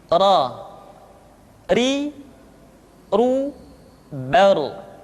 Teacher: Berikutnya adalah huruf ra. Diucapkan dengan menyentuhkan punggung lidah dengan langit-langit.